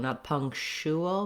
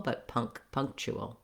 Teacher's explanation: So it sounds like ch. In a word like punctual, it does sound a little bit like an SH, but I don't want it to be long. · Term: ch sound